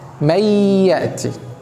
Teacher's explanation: نون ساكنة جاء بعدها ياء، والياء من حروف الإدغام بغنة، هنحذف النون وهنشدد الياء تبقى إيه؟ من يأتي.